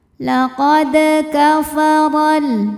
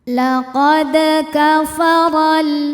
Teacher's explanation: Huruf ro dibunyikan secara tafkhim. Sebab robaris fathah maka dibacanya tebal.